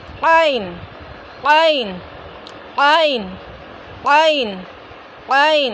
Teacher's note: हलक के दरमियानी हिस्से से अदा होंगे। कहाँ से, हलक के दरमियानी हिस्से से।